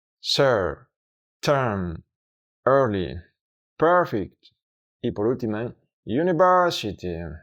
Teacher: es el mismo sonido que el de la sha, pero se pronuncia más largo, aproximadamente el doble de largo, aunque no siempre tiene la misma duración exacta, debido a que depende del contexto fonético y del ritmo del habla. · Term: reverse epsilon